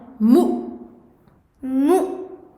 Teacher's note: Il faut couper le son. On coupe le son tout simplement en refermant les cordes vocales d'un seul coup. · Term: hamza sakina